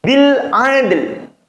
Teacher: Jadi qalqalahnya atau mantulnya dal langsung kepada lam yang dibaca samar.